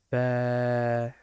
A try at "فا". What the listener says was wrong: Fa. Stretch. That's a little alif there. Fa. Fa. Fa.